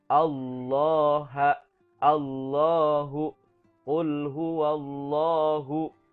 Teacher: kalau didahului sebelumnya oleh huruf hijaiyah yang berharakat bomma atau Fatah maka bunyi Allah ini harus tafkhim atau tebal